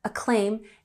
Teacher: we have emphasis on the second syllable